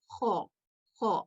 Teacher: तो एक हर्फ जो कि खौ है, ये तफखीम है जो कि मोटा अदा किया जाता है, और ये हलक के दरमियान वाले हिस्से से अदा किया जाता है, खौ खौ। और चूंकि ये तफखीम है इसलिए अगर हम होठों को गोल रखते हुए इसको अदा करें और हलक के दरमियानी हिस्से से अदा करें तो इसकी आवाज ज्यादा बेहतर आएगी, खौ।